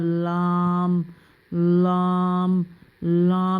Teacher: زبان کا کنارہ جب سامنے اوپر کے دانت کے ساتھ بائیں یا دائیں جانب والے مسوڑوں سے لگے تو یہ حرف ادا ہوتا ہے ، یعنی کہ زبان کا کنارہ اس کو پکڑیں سامنے والے